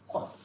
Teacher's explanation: apabila pangkal lidah diangkat ya diangkat ke langit-langit lembut ya di mana ia ditekankan pada anak lidah keluar daripadanya huruf qaf